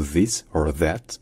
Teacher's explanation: c'est le pareil que le son anglais qui est fait en faisant passer le son entre la pointe de la langue et les dents